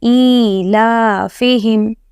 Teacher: you have to drag the alif also and lam also, because both have the long vowel sound.